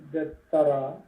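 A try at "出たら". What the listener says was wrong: ದೆತ್ತರ ಅಲ್ಲ ದೆರ ಒತ್ತೇ ಹೇಳಬಾರದು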